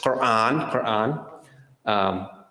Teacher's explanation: there's also one with the back of your tongue hitting the top of your mouth and that's what the quran has